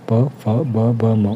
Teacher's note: प वर्ग में प, फ, ब, ब, म और इसका उच्चारण ओष्ठ होगा।